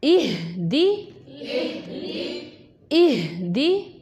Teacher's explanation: हा जो है वो मोटा हा है, जैसे कि आपको बताया गया था वो सीने से निकलता हुआ महसूस होगा